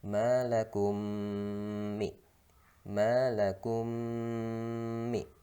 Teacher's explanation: Mim sukun bertemu mim itu hukumnya adalah itu semisal ya, mim sama mim jadi idgham mutamasilain, dibaca dengan berdengung. Malakum mi, bukan lakum mi, tapi dengungkan dulu, lakum mi.